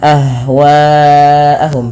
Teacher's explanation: panjangkan bunyi suara wa, karena di sini ada namanya mad wajib muttasil yang dimana dipanjangkan 4 atau 5 harokat.